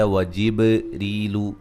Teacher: با پہ قلقلہ, ری یا مدہ ہے. را کو باریک پڑھیں گے.